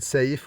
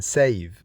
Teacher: f, like in safe, which is voiceless, and v, which is voiced like in save.